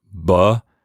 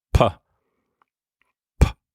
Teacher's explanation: P and B are the same. B is voiced, B, but P is unvoiced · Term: voiced and voiceless stops